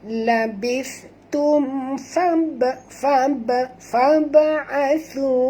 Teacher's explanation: huruf ba mati di tengah-tengah kalimah, jadi kita kena lantunkan dengan lantun kecil. Sini hukumnya qalqalah sughra, ya.